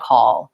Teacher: but in order to get the correct sound for call call when I say it by itself my dark L is more pronounced